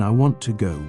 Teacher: In I want to go, we stress want and go, while to becomes softer. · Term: sentence stress